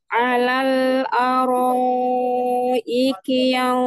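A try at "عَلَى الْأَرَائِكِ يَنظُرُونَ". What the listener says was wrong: Huruf ainnya tampakkan, huruf ain. Alal araiki yanzurun. Dan di sini ikhfa-nya masuk ke ikhfa yang tebal. Jadi yanzurun.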